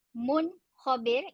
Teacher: Mun khabir, tanwin atau bunyi nun secara jelas dan kha pun secara jelas.